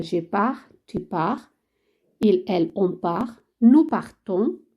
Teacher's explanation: Os recuerdo que las S finales no se pronuncian en francés, ni la T aquí al final